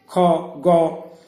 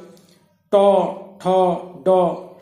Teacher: প্রথমে শ্বাসবায়ু বাধা পেল তারপর হঠাৎ করে আমরা ছেড়ে দিলাম · উচ্চারণকালে শ্বাসবায়ু কিছুক্ষণের জন্য হলেও সম্পূর্ণ বাধা পেয়ে যায় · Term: প্রতিহত ধ্বনি